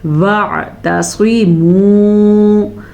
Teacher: ہم نے پڑھنا ہے وَاعْتَصِمُوا، عین کے مخرج کو واضح کرنا ہے، تا کو تا ہی پڑھنا ہے، سواد کو پر پڑھتے پڑھتے تا کو توا مت بنا لیجئے گا۔ وَاعْتَصِمُوا، سواد پر اور میم پیش واو، مو، واو مدہ۔